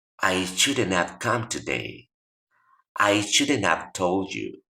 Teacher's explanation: es una E más neutral que la que tenemos en español, para hacer la transición entre la D y el sonido de la N